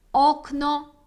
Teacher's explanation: в польській воно не округлюється до А як буває інколи в українській воно завжди тверде закрите о